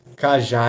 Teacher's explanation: Então cajá é uma oxítona. A sílaba mais forte é a última sílaba.